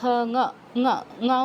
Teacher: তো অনুস্বারের পরে ক বর্গীয় অক্ষর আছে, তার মানে অনুস্বারের জায়গায় ক বর্গের অনুনাসিক ধ্বনি উচ্চারণ হবে।